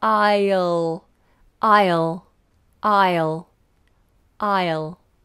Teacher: this is a dark L, so you make sure you get that I and then the L, the tongue comes up.